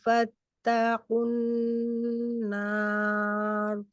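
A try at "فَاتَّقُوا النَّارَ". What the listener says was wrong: নার নাকে গেছে, নার এরকম না, আন্নার। না, মাত্রা জাউ থেকে আসবে, আপনার মাত বের, নাক থেকে বেরোচ্ছে না। না আ না আ নার।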